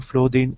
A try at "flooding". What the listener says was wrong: Not flow, but flooding. Like duck. Remember our chart, the vowel chart? It's the short sound of U. Like duck. Flood.